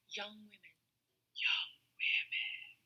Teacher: a vocal fry is quite typical in teenage years of adolescence that use this particular speech pattern